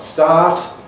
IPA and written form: staːt (START)